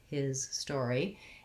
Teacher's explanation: the letter S in the word his is the sound Z